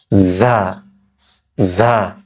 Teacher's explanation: জিহ্বার আগাটা নিচের দাঁতের আগার সঙ্গে লাগিয়ে বা নিচের দাঁতের গোড়ার সঙ্গে লাগিয়ে